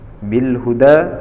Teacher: lam ta'rif di sini adalah bertemu dengan huruf ha, disebut dengan izhar qamariyah, maka lamnya tetap dibaca